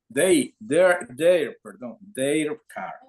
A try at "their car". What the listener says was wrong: Ah, remember the pronunciation, we don't pronounce E.